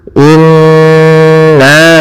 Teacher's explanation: Cara membacanya kita tahan dulu suara n-nya 2 harakat. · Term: gunnah